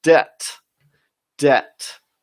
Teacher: you don't pronounce it debit, okay? You don't pronounce the B.